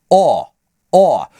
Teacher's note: Читается он как русское О, только шире открывая рот.